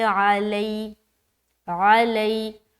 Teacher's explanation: یا ساکن سے پہلے زبر ہے تو یا لین کا قاعدہ ہے، نرمی کا خاص خیال رکھنا ہے اور جلد ادا کریں گے اور معروف کا بھی خیال رکھیں گے۔